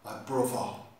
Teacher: the TH sound would become V